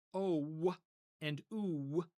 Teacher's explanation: when we say O and U, what do you hear at the end of it? You hear a W, right? And that's the reason why vav is used for the o and u vowels.